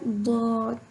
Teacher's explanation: زبان کی کروٹ اور اوپر والی داڑھوں کی جڑ سے ادا ہوتا ہے۔ پچھلے اسباق میں ہم نے دیکھا تھا اوپر والی 5 داڑھوں کی رائٹ یا لیفٹ داڑھیں ہم یوز کر سکتے ہیں ضاد کو ادا کرنے کے لیے۔ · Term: موٹا حرف